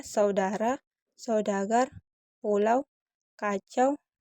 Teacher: bunyi vokal keduanya diucapkan dengan posisi lidah lebih tinggi dari yang pertama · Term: diftong naik